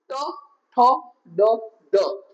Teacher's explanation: તમારી ટંગ જે છે જીભ એ તમારા તાળવા સાથે ટચ થાય છે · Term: રેટ્રોફ્લેક્સ